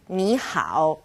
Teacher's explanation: two third tones turn into second and third like ni how right that's an all across the board rule